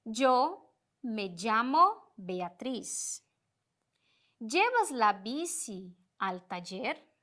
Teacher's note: Vocês irão perceber que nessas partes onde estão destacadas com a cor vermelha, nós não vamos identificar na voz se eu estou falando com Y ou com 2 L's